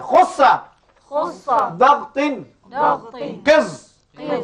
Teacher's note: lidah terangkat ke atas bunyi hurufnya tebal